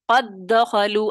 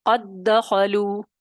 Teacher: اور اس کو پھر کیا کریں گے، پہلے دال ساکن کو دوسرے دال متحرک میں داخل کریں گے، دونوں ایک ساتھ مشدد ادا ہوں گے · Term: ادغام صغیر